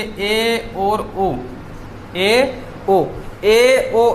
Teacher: ऐसे स्वर हैं जिनका उच्चारण करते समय जो मुख्य गुहा का द्वार है वो संवर्त स्वर ई ऊ री की अपेक्षा थोड़ा सा ज्यादा खुलता है